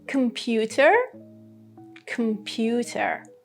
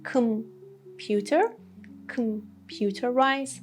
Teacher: But for computer and computerize, for these O letters, we had Schwa sound.